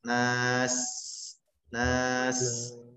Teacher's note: Maka sifat daripada huruf sin yang pertama adalah hamas, mengalir nafas, nas, nas. Yang kedua rokhawah, memanjang suara, nas, es, es.